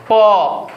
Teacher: খেয়াল করবা আমার দুইটা ঠোঁট কিন্তু একসঙ্গে লেগে যাচ্ছে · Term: ব্যঞ্জন ধ্বনি